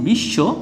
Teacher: ব ফলা যুক্ত বর্ণটি দুইবার উচ্চারিত হয়